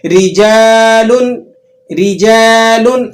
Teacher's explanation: اب را کے نیچے حرکت ہے تو آپ نے اس را کو باریک کر کے ادا کرنا ہے